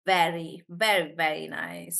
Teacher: So when we say the V sound, even the Hindi V, I'm biting into my lip, right? · my teeth will touch my lip, my bottom lip, right?